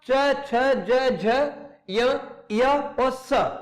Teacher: इन सबका जो है वो स्थान, उच्चारण स्थान क्या है, तालव्य। ये तालु से इनको उच्चारण किया जाता है, इसलिए इनको तालव्य कहते हैं।